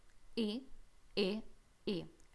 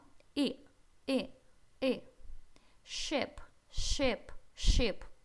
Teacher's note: это такой звук который не просто и в русском языке Аа это а совершенно плоский звук немножко между и и ы